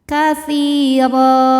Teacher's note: Sebab ada ya sukun yang sebelumnya berbaris kasrah. Maka huruf ta panjang 2 harokat. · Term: mad tabi'i zahiri